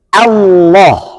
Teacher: Harus Allah. Hamzahnya tipis, lamnya tebal karena lam jalalah.